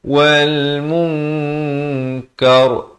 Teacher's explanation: Kita samarkan. Nak kata nun pun tidak, kaf pun tidak, dengan kadar 2 harakat. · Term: ikhfa